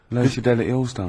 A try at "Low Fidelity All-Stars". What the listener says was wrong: Yeah, Low Fidelity, because you went Low Fidelity All-Stars. No, it's just you didn't open your mouth wide enough.